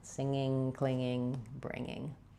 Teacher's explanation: When I get clinging is when I'm building up pressure and bursting out that G sound.